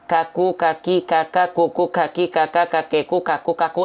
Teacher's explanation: hamsnya bukan mengalir tapi hanya berupa perecikan-perecikan nafas saja tuh ya huruf Kaf itu punya sifat hams artinya harusnya mengalir nafas tapi karena ada pengkhususan untuk huruf Kaf maka Hanya berupa percikan nafas